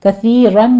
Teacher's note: جلالہ بھی باریک پڑھا جائے گا، کثیرن میں بھی را باریک، کثیرن میں سا کو باریک پڑھتے ہیں، یہاں پہ سا کی آواز میں سیٹی نہیں لانی ہے آپ نے